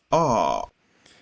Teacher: that is the low uh unrounded uh back vowel and that's something like what you would say at the doctor's